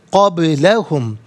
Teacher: قبلہ میں با ساکن ہے اور ناظرین ساکن تو ہے لیکن یہ با حرف قلقلہ ہے تو آواز لوٹتی ہوئی محسوس ہونی چاہیے